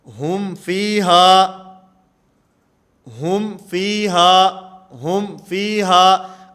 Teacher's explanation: میم کی جو آواز ہے اس کو بالکل ظاہر کر کے پڑھا جائے گا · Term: اظہار